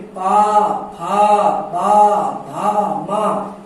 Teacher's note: पा वर्ग में पा, फा, बा, भा, मा, ये भी ओठ से उच्चारित होता है, ओठ से बोले जाते हैं ये लोग